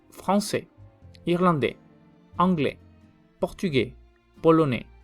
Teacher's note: cuando una palabra termina con consonante, en este caso la S, no se pronuncia. Entonces aquí las S van a ser mudas.